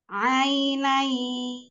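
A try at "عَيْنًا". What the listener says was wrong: Tampakkan huruf ainnya. Ainai. Ainai.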